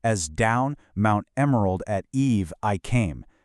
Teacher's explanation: If we analyze the line as Down Mount Emerald at eve I came, we can actually count five iambic feet. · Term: iambic pentameter